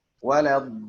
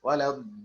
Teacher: ditinggiin sedikit suaranya. Itu nabar.